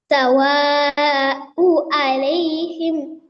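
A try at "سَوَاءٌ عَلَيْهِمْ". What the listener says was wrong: সাওয়া উ আছে, হামজার উপরে দুই দুই পেশ আছে আছে না? তাহলে কি হবে? সাওয়া উন আলাইহিম, এখানে কি রুলস এসেছে বলেন।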